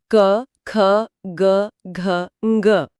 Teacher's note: ये सभी पांचों अक्षर कंठ से बोले जाते हैं।